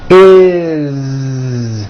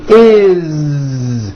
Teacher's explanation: It's always is with a voiced Z. Okay, do this with me.